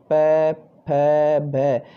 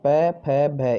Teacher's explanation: ये हमारे जो होठ हैं वो टच होके उनसे हवा निकलती है, इनसे बोले जाते हैं ओष्ठ स्थान से।